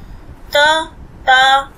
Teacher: दांतों में जीभ टच हो रही है, ऊपर तालु पे टच नहीं हो रही।